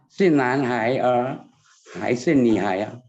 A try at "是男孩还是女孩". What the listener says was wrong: Oh, 是男孩. Jadi 孩 itu dia er-nya nggak dibaca ya, e-nya nggak dibaca. Jadi 是男孩.